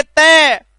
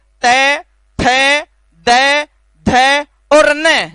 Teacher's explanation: जिह्वा का स्पर्श सीधा सीधा दांतों से होता है। इसलिए इन वरणों को हमें दंतः मानते हैं।